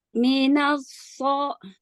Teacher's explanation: Minasfo, itbak, naik ke langit-langit suaranya. Coba di minasfolihuna. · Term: tafkhim